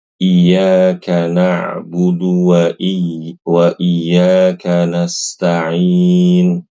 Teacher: di antara kesalahan pada ayat ini adalah meniadakan tanda tasdid di kata iyyaka